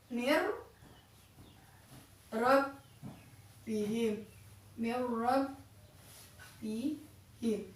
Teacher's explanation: Ada nun sukun bertemu dengan huruf ro. Jadi masuk tapi dengan tidak mendengung. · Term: idgham bilahuna